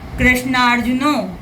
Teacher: समान स्वर आने पर बड़ा हो जाता है, दीर्घ हो जाता है